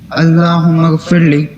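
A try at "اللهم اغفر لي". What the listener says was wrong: اللہم اغفر لی، لی پہ لمبا کرنا ہے، لام یا زی لی ہے، یا مدہ ہے. اللہم میم پہ غنہ بھی ہوگا.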